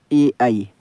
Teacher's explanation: ए आई को हम कंठ और तालु से उच्चारित करते हैं दोस्तों